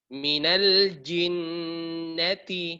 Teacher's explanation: ada nun musyaddada di situ, dua harokat dengungannya, ya. Minal jinnati.